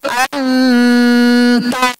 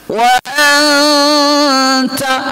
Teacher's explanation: Tapi an-nya itu samar-samar dia. Tak jelas sekali an-nya itu. N-nya itu N tak jelas. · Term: ikhfa